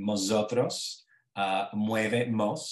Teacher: Realization of initial M, as in mosotros, mueve mos, so the N is an M, oftentimes following when there's a diphthong afterward, but not always, as in the case of mosotros and mos.